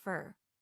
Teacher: the preposition for is usually pronounced fur